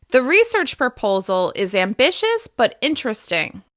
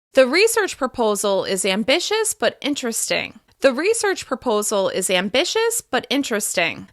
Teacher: I'm pausing and slightly changing my intonation after the words proposal and ambitious.